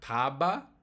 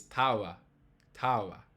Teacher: It's a light tap of your lips, tava. Almost a W, but not quite. · in Spanish they don't actually touch their lips together. They just get really close.